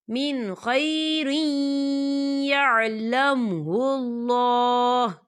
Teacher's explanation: تو یہاں پر ادغام ہوگا، تھوڑا سا غنے کے ساتھ پڑھیں گے اسے